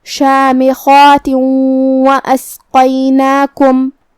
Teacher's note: قاف کی ادائیگی زبان کی جڑ اور تعلق کے نرم حصے سے ہے. قاف حروف التفخیم میں سے بھی ہے، تو ہمیں اسے بھاری آواز میں پڑھنا ہے